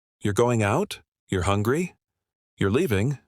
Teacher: No rising tone. No clear question format. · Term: non-question question